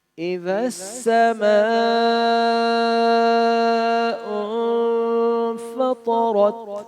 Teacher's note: طا اور را موٹا اور یہاں پر اخفا، ناک میں آواز کو چھپانے کو اخفا کہتے ہیں.